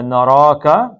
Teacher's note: را 2 حرکتیں مدے اور را کو موٹا پڑھنا ہے